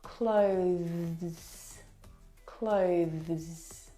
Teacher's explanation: the th sound is very very soft it is definitely still there it needs to sound different from the verb close okay which